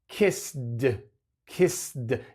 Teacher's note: es muy difícil decir una d directamente después de esa s kissed kissed es mucho más fácil decir Kiss con una t